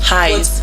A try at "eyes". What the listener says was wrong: But it is not highs. It is eyes. Like as in ICE. Yes, not highs. Not you adding the letter.